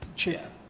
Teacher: I think for the Scottish accent, it's just a lot more rough, the beginning syllable. So instead of t, it's more just ch. Tube. Yeah.